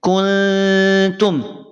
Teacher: ketika mengucapkan ikhfa yang samarnya lemah, maka tadi cara bacanya tidak menyamarkan seluruhnya. Masih terasa sayup-sayup nun sukunnya. Kuntum. Tidak kuntum. · Jadi ketika mengucapkan ikhfa yang samarnya lemah, maka tadi cara bacanya tidak menyamarkan seluruhnya. Masih terasa sayup-sayup nun sukunnya.